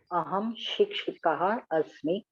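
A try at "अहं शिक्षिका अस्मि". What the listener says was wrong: Shikshika asmi. There is no visarga. Shikshika asmi. Okay, here also Shikshika.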